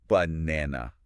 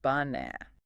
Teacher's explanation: We stress the middle bit. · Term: Word stress